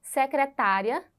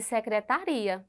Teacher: é a mesma palavra na escrita mas a sílaba tônica muda